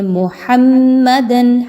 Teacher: हा को वहां से अदा करें जहां से उसको निकलना है वसते हलक से हलक के दरमियानी हिस्से से · ہاں کو وہاں سے ادا کریں جہاں سے اس کو نکلنا ہے، وسط حلق سے، حلق کے درمیانی حصے سے